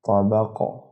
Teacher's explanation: قلقلہ ہو گیا اس لفظ پر، قاف پر